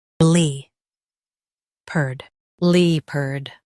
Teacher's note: Emphasize lep and soften erd.